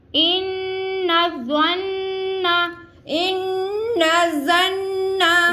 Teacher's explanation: यहाँ पे क्या है, नून मुशद्दद पहले भी आ रहा है और लास्ट में भी आ रहा है। दोनों जगह हमने नून मुशद्दद का गुन्ना अदा करना है।